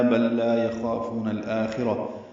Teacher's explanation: بل لا میں لام ساکن ہے اور پھر لام آیا تو ادغام میں مثلین ہوا